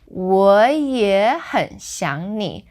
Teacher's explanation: So that very first 我 is our normal third tone. Then it changes to 我也很想你, starting with the second tone. Okay, so it becomes like second, third, because the first 3 words are kind of together, and then 想你.